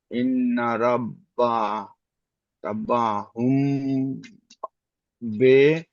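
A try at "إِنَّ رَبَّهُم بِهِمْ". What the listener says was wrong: বলবেন, বে বলবেন না, বিহিম, বা জের বি, হ্যাঁ, বিহিম। ইন্না রব্বাহুম বিহিম।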